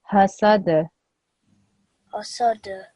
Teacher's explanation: when I read this dal sakin, I need to give it a jerk sound, okay? So instead of saying hasad, I will say hasad.